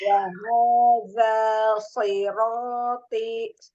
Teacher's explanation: Selesaikan dulu harokat zalnya yang 2 harokat. Jadi jangan keseret.